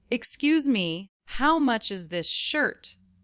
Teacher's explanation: Say it with a rising tone at the end for a question.